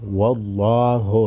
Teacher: लफ्ज़ अल्लाह के लाम को मोटा पढ़ेंगे। लफ्ज़ अल्लाह से पहले वाले हर्फ वाव पर ज़बर है।